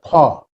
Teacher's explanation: pha is bilabial. We touch our two, we close our lips together.